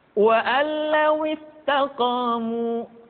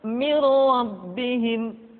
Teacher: nun mati tanwin dimasukkan pada huruf lam dan ra yang dihadapannya tanpa harus ditahan. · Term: idgham bila gunnah